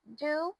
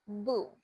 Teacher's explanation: on do, you will see my tongue reaching the ridge of my mouth. However, for the word boo, I am just forming a circular motion on my mouth when pronouncing it.